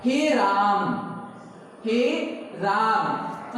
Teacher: हे राम, हे राम, मतलब आपको ऐसा महसूस होगा कि हम कुछ देर तक बोलते रहते हैं, यानी उच्चारण का तार जो होता है लंबा खिंच जाता है, तो पलुत स्वर कहलाएगा।